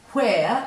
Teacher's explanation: if you say where you can feel the air after the W